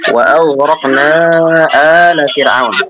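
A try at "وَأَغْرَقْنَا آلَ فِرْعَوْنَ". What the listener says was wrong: A-nya panjang, hamzahnya panjang.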